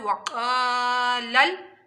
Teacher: वाऊ को दोनों होंठों की गुलाई से अदा करना है और अलिफ मदा करना है।